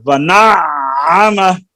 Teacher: عین کے اوپر شدہ ہے نا، تو یہاں پر آواز جما کر آگے نکلے